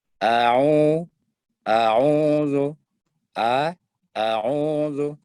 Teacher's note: Perhatikan perpindahan huruf hamzah ke ain itu tidak boleh terputus. Jadi jangan dibaca a'udzu, a'udzu.